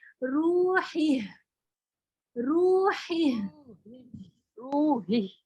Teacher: हा पढ़ के आगे जो है वो हम्स और आवाज दोनों साथ निकालनी है